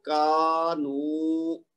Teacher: کاف کے بعد الف مد ہے تو اس کو اوپر کی طرف 2 حرکت کھینچیں گے. نون کے بعد واو مد ہے تو اس کو آگے کی طرف 2 حرکت کھینچیں گے